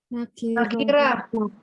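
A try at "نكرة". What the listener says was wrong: nakiro. Bukan nakirah Bu ya, nakiro. Ada huruf ra di bahasa Arab. Adanya apa? Ro. Tebal, harus tebal.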